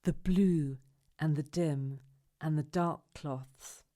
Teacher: which words do you think we emphasize in this line blue dim dark the adjectives